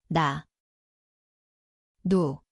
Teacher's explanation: die plek is die tongpunt boonste tandvleis.